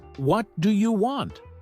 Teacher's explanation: if you say it with a flat tone it sounds neutral but if you stress you like what do you want it